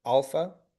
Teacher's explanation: accented at the beginning and soft breathing